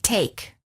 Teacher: the tongue is tense moving from mid High position to high position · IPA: /eɪ/